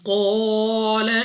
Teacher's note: قاف مستعلیہ میں سے ہے پر یعنی موٹا پڑھیں گے. الف سے پہلے زبر الف مدہ 2 سیکنڈ تک لمبا کرنا ہے.